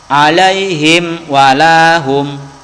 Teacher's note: huruf mimnya ini jelas dan tidak usah didengungkan. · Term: idhar safawi